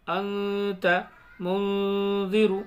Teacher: ناک میں تھوڑی دیر آواز کو رکھیں گے، نون کی آواز کو، گنہ ہو جائے گا